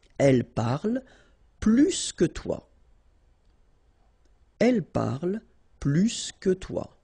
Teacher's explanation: And so the last structure, if you want to compare with a verb, then in that case, remember, plus will be with the S. So pronounce it plus que.